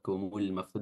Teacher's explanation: Kumul maftun di sini ada mim sukun atau alif lam atau lam yang sukun bertemu dengan mim, namanya alif lam al-qamariyah dan lamnya dibaca jelas. Maftun di sini kita baca 4 harakat mad arid bisukun